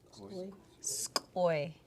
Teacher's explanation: There's a variance on them where sometimes some areas would pronounce it with a glottal stop and some areas would not. But skoi has no glottal stop at the end.